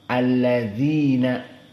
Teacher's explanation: Maka alladzina makhrajnya dari atraful lisan, alladzina dibaca allazina. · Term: makhraj za